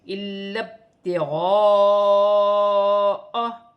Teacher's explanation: اور یہاں پر الف مدہ پر بڑی مد بھی ہے، مد متصل، اسے 5 الف کی مقدار تک کھینچ کر پڑھا جائے گا